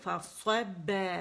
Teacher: فا باریک ہے، صاد موٹی ہے